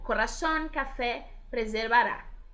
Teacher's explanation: Agudas, ou então oxítonas, palavras que tienen la última sílaba tónica, como corazón, café, preservará.